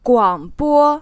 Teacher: it's said with the third tone then the first tone